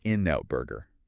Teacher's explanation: the final consonant N of in links immediately to the N of N out. And the final T of out often gets ellighted or dropped entirely because it's before another consonant. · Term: natural linking and reduction